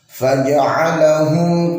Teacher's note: Faja'alahum ini jelas nggak boleh dengung